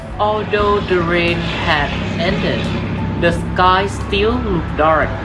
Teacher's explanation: The first clause is pronounced with the 2-3-2 pattern, while the second clause is pronounced with the 2-3-1 pattern.